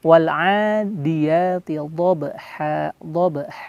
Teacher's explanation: Dan posisi lidah di dalam bibir kita ini seperti menyentuh langit-langit namun agak lebih ke kiri atau di kanan, terserah kita ya cocoknya yang mana, kiri atau kanan. Dan ketika melafalkan dha, lidah kita itu nyentuh di langit-langit dekat gusi yang atas, seperti itu. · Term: huruf dha